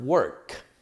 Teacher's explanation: the last sound of the verb work is a K. It's a K sound. And this is what we're going to call a voiceless sound.